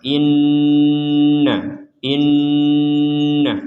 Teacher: jadi didengungkan di rongga hidung kita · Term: dengungan